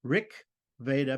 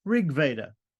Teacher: the K at the end of Rick changes to become softer it becomes voiced also